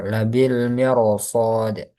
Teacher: Huruf ra dibaca tebal.